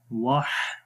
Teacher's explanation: सिफ्ते रखावत भी है, वाह आवाज़ भी जारी हो रही है